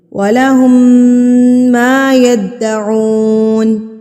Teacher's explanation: اب یہاں پر میم مشدد پر ہم غنہ کریں گے، یعنی کہ ناک میں آواز کو لے کے جائیں گے.